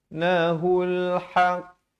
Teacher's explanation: ha pedas di pertengahan kerongkong makhrajnya.